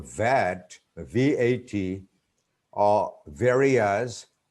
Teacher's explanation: labiodental, which is pronounced with upper front teeth and lower lips